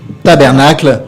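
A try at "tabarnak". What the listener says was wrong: Voilà, tabernacle, on dit pas le cl. Tabarnacle.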